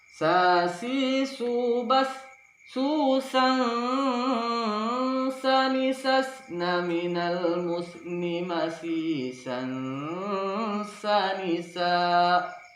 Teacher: ujung lidah kita hampir bertemu dengan gigi bawahnya sambil menyamar-nyamarkannya dan mendengungkannya 2-3 ketukan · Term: ikhfa